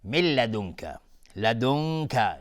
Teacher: نون ساکن بهش کاف، اخفای حقیقی